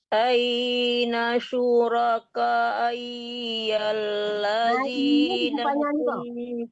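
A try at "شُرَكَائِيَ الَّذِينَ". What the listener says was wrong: Bu, K-nya dipanjangkan lagi, tapi I-nya jangan ditahan. Jangan ditahan. Syuraka iyal. Jangan iyal. Kalau iyal panjang itu namanya. Iyalladzi-nya itu yang panjang tapi i-nya jangan. Syuraka iyalladzi. Azinya itu yang dipanjangkan, jangan i-nya. Kalau i-nya tidak panjang karena ya-nya tidak mati.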